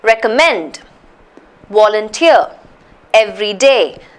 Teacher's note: the stresses on the third syllable